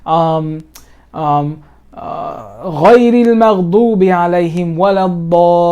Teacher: So when you have a mad and a shadda that follows, it means it's connecting. You must make it 6 long.